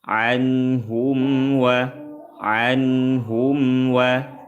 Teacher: mim sukun berjumpa dengan wau. Hukumnya izhar syafawi. Mimnya dibaca jelas.